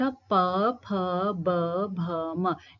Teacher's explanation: छू रही है ओष्ठ ओष्ठ प फ ब भ म इन इन वर्णों का उच्चारण करते समय जो है होठों पर प्रेशर पड़ रहा है